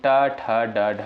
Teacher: ट, ठ, ड, ढ यानी मूर्धा से होता है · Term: ट वर्ग